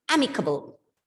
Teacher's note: And the stress is on the first syllable.